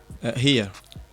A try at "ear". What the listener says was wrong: Não é com R, é mesmo só com I. Não, sem R.